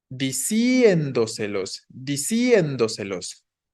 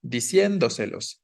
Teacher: la tonicidad va sobre la E